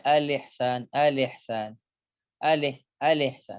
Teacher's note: Huruf hamzah yang menghadapi huruf ha. Yang keduanya bermakhraj berdekatan, maka jelaskanlah bunyi keduanya.